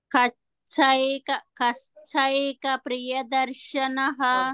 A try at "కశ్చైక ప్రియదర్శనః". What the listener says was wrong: కశ్చైక అన్నప్పుడు ఒత్తుఛా వినిపించింది, ఇక్కడ ఒత్తుఛా లేదు అక్కడ. కః కః ఏక ప్రియదర్శనః. కశ్చైక ప్రియదర్శనః. కశ్చైక ప్రియద కప్రి అప్రి స్ట్రెస్. కశ్చైక ప్రియదర్శనః. ప్రీ అన్నప్పుడు మీరు సరళంగా పలికారు అట్లా కాదు, కొంచెం స్ట్రెస్ ఉండాలి. కశ్చైక ప్రియదర్శనః.